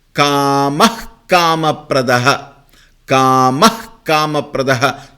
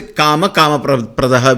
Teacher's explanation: When visarga is followed by kavarga, this visarga is retained as h, half h.